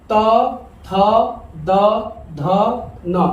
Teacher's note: इनका उच्चारण करने के लिए हमको दांतों का सहारा लेना पड़ रहा है, इसलिए इनको हम कहते हैं दंत।